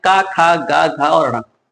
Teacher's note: का वर्ग जो है कंठ से बोले जाते हैं